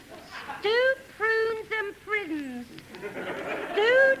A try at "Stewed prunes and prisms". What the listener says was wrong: No. Prisms. Your vowel sounds are slipping again. You must remember, to succeed in taking from here, it's essential to be vowel-minded. Now, my good girl, watch my mouth. Notice how I get stewed before even touching prune. Now, observe my lips.